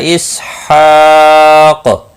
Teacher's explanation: جب وقف کیا تو قاف ساکن رہا، اس پر قلقلہ بھی ہوا کیونکہ یہ حروف قلقلہ میں سے ہے۔